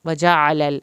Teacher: عین کو حلق سے پڑھیں گے